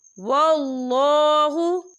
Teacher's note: یہاں اللہ کا نام پر پڑھا جائے گا کیونکہ اللہ کے نام سے پہلے زبر ہے